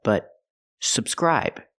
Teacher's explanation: We have to move the stress to the second syllable.